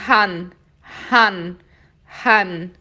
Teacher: É como se primeiro você fizesse o ha e depois você colocasse o N.